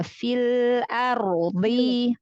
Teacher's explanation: Ikhfa-nya tipiskan lagi ya, nun sukun ketemu fa, lalu tanwin ketemu sa, semuanya huruf tipis.